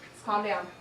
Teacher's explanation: the participant illustrates further avoidance of the liquid la in both instances of calm